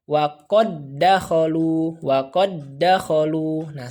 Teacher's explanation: langsung saja masuk ke huruf Dal yang kedua seperti itu dibacanya tanpa ghunnah